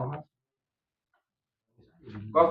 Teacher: Pangkal lidah paling belakang ya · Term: huruf qof, Kof